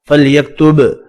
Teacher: با ساکن قلقلے کے ساتھ پڑھیں گے